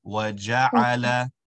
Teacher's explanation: So instead of saying وَجَعَلَ, the ayn is not going to have a stretch, just a short sound